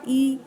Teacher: जो हमारा मुख द्वार है वो बहुत ज़्यादा नहीं खुल रहा है उन तीनों की अपेक्षा। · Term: समृत स्वर